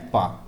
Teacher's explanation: प वर्ण जो है वो ओट की सहायता से बोला जाता है स्पर्श व्यंजन भी है अल्प प्राण भी है आघोष भी है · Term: अघोष